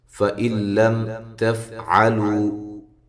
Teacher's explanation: فَإِن لَّمْ تَفْعَلُوا، حمزہ کو تحقیق کے ساتھ پڑھنا ہے۔ یہاں نون ساکن کا ادغام ہے لیکن بلا غنہ ہے۔ فَإِن لَّم، ٹھیک ہے، یہ نون نہیں پڑھا جائے گا۔